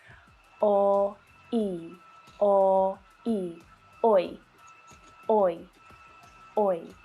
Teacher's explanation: Let's try oi, oi, as in boy. Now this sound is made from the o and I vowel sounds. O like bought and I like sheep. O, I, like boy.